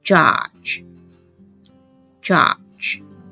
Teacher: When j is in the beginning, it will sound [dʒ] judge